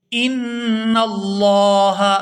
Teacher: ان اللہ، یہاں لفظ اللہ کے لام کو پورا ادا کیا جائے گا کیونکہ لفظ اللہ کے لام سے پہلے زبر ہے